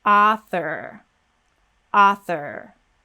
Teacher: back of the mouth for that er sound author author so we go straight from th into r · the th and then we pop back for the r get our tongue tense right away at the very back of the mouth for that er sound · the tongue is between the teeth for the TH, and then we pop back for the R. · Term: syllabic consonant